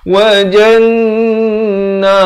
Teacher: Nun sabdu dibacakan dengan dengung 2 harakat. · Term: wajibul gunnah